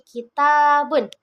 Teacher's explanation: Ta ini dihasilkan dengan ujung lidah menyentuh gigi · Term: suara lidah